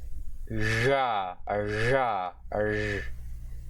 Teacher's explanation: the voiced retroflex sibilant fricative consonant